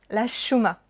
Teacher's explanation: where I grew up, we didn't really pronounce the H